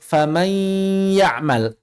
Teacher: Kalau idgham naqis itu masih ada yang tersisa. Contohnya pada lafal faman ya'mal, ada makhraj atau lebih tepatnya sifat hunnah yang tersisa